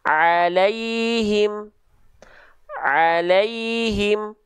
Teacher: Ini ain, tengah tenggorokan.